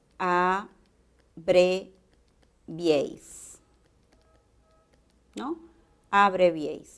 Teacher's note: la mayor fuerza de voz tiene que estar en una abierta ubicada en el medio de esta secuencia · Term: triptongos